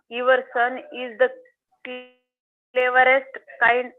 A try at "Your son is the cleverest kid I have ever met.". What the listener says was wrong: Your son is the cleverest kid I have ever met. Kid. Kid लिखा है. आप क्यों kind पढ़ रहे हो? Kid लिखा है.